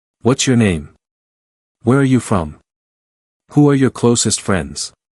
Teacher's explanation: all these questions share a similar intonation, they lean downward slightly or remain neutral at the end.